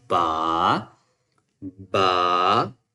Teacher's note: It means that in the last of Ba sound, we will add a two, or maybe we will prolong the A sound after Ba.